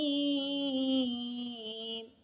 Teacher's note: یہاں پہ نوٹس کریں میں نے میم کے اوپر غنہ نہیں کیا کیونکہ میم کے اوپر تشدید نہیں ہے. اگر یہاں پہ میم کے اوپر تشدید ہوتی تو یہاں پہ بھی غنہ ہونا تھا. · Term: بغیر غننے کے